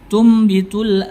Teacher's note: ada yang membaca dengan intibaakusyafatain merapatkan kedua bibir ada juga membaca dengan furja memberikan sedikit cela tapi kita menggunakan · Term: iqlab